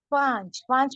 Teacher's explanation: क्या है पूरा नहीं पढ़ा जाएगा सिर्फ थोड़ा पढ़ा जाएगा पा हल्की आवाज आएगी नाक में रहकर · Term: नून साकिन